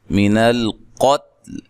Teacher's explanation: قاف کو موٹا ادا کرنا ہے، تا کو جو ساکن ہے اس کو ہلانا نہیں ہے.